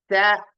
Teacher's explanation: స అన్నారు ఆ అన్నారు అన్నప్పుడు అంగడి తగులుతుంది స అన్నప్పుడు బుగ్గలు తగులుతున్నాయి స అన్నప్పుడు దంతాల దగ్గర నుంచి వస్తుంది శబ్దం